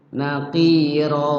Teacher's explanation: Fathatain kalau diwakafkan maka dibaca panjang. Panjang. Hukum bacaan tajwidnya disebut mad iwad lit tanwin.